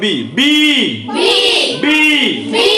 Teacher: বি বলার সময় কিন্তু আমরা দুই ঠোঁট মিলাই পড়তেছি, তাই না? আর যদি তুমি দুই ঠোঁট না মিলাই পি বা বি পড়ো, তাহলে ওটা সঠিক উচ্চারণ হবে না।